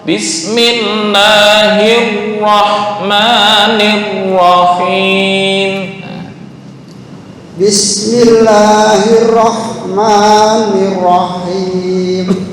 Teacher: Untuk ra agak kenyang ya. Kenyang tuh maksudnya tafkhim.